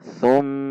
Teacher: Mim tasydid berarti dibaca gunnah atau ada dengung. Dibaca dua ketuk dan harus panjang.